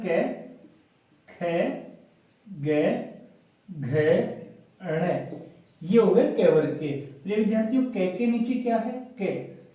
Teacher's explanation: इनका उच्चारण स्थान क्या हो जाएगा कंठ यानी कंठ से होता है